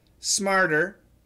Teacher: smarter is a flap T and like I tell students the flap T is very similar to a d